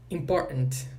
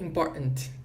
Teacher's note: Esse T, ele vira uma pausa glotal. Pausa glotal vem de um nome, vem de uma parte aqui do nosso aparelho fonador que se chama glote, ok?